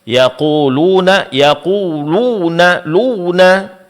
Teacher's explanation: Terlalu berlebihan di dalam menekan suara pada kedua bibir di saat mengucapkannya.